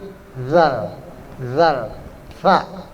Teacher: Kalau zal itu bunyinya makharijul hurufnya, ujung lidahnya keluar sedikit. Zal, sa. Zal sama sa yang sama tuh.